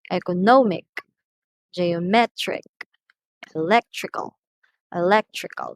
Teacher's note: the syllable before the ending receives the stress